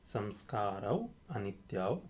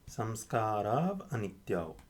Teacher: If it's two saṁskāras, anityau, saṁskārau, or I can switch it, saṁskārau, anityau, and with sandhi the au becomes av